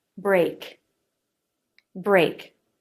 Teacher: Back of the tongue lifts up and touches the soft palate, then pulls away. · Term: K sound